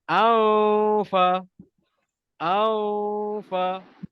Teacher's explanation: Jadi bila kita dengungkan dia, ingat jangan naikkan lidah ke atas, tetapi kita kena gigit bibir kita sebab dia bertemu dengan fa. Jadi bacaan dia akan jadi aufa. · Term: dengung sama